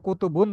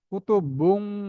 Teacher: নাক দিয়ে আওয়াজ করতে হবে গুন্না করতে হবে